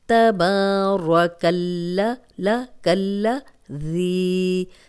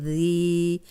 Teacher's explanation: تبارک الذی، ذال کو نرم پڑھیں گے، نرم حروف 3 آپ نے پڑھے تھے، ثا ذال ظا، اوپر سامنے کے جو 2 دانت ہیں ان کے اندرونی کنارے پہ رکھ کے زبان تو ادا کریں، سیٹی کی آواز نہیں آئے گی